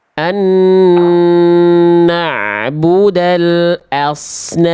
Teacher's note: Tebalkan huruf shad ya. Angkat pangkal lidah. Karena kalau kurulang tebal jadinya huruf sin. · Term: huruf shot